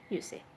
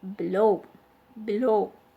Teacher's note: The stress is on the second part, low.